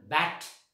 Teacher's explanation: for example ॲ, which one बॅट, त्याच्यामधलं ॲ, ह्याचा उच्चार करत असताना म्हणजे आपण म्हणजे काय करतो माहिती, राऊंड होत नाही, आपल्या गोल आकार होत नाही आपल्या ओठांचा, त्यामुळे तो अनराउंडेड आहे